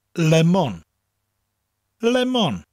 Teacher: You distinctly hear the two separate syllables, and they're said evenly.